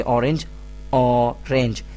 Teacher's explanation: The initial sound of this word directly comes from your throat. It means that you do not use your lips or tongue to make the sound. The initial sound is a vowel sound.